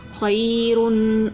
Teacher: دو پیش کی تنوین تھی غنہ کر کے پڑھا